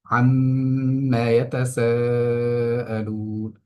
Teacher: ইয়াতাসাআলুন শব্দটার মধ্যে সিনের মধ্যে আমরা 4 আলিফ পরিমাণ টান দিয়ে পড়ছি